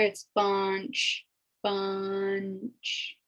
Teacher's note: So the N is kind of subtle, but it's there.